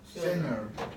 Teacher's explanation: It's like I double up the N in there and it becomes center. Center. Yeah, it seems unnatural, but that's just the way it happens when the N is king.